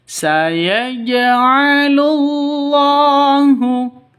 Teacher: jalalah itu kalau di tengah panjangnya Hanya dua dua ketukan ya lafzul jalalah Hanya dua ketukan kalau di tengah